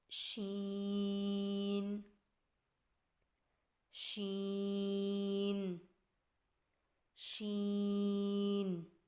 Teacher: شین کی ادائیگی میں زبان کے درمیان کو تالو کی طرف بلند کرتے ہوئے باریک اور پھیلتی ہوئی آواز میں پڑھیں.